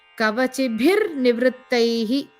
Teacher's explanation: For example, in the first line, the kavacibhi, we said kavacibhi, but we have shown it as kavacibhir because the ra sound will come when you combine the kavacibhi with the next word, nivrittaihi.